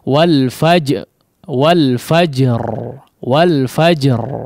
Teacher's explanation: agak dijeda nggak masalah, ya, mantulnya agak dijeda sepersekian detik mungkin, ya. Atau sejenak saja.